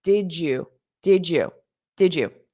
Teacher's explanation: when we combine a D and a Y, then those together form a J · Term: J sound, j sound